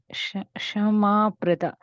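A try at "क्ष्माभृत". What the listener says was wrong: So think of like it starts with a K. Kshmabrita. KSHMA. Kshma.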